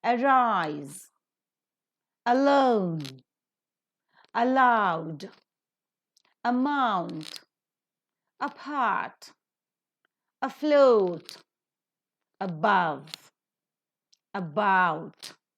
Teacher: all these words begin with the weak prefix a and so the root word are given stress